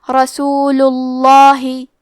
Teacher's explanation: آخری میں لام پہ پیش ہے تو ہم لفظ الجلالہ مطلب کلمت اللہ کے لام کو موٹی آواز میں پڑھیں گے